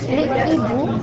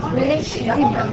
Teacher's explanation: Cela explique pourquoi le H aspiré n'accepte pas la liaison. Avec le H aspiré, les liaisons ne sont pas autorisées. Par exemple, les hiboux ne se prononcent pas les hiboux.